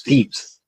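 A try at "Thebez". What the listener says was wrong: saying thieves, but Thebes with a B.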